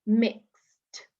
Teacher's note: It can sound sometimes even like a t sound, mixed, instead of ed.